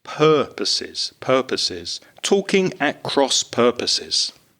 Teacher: the pronunciation of purposes, which is stressed on the first syllable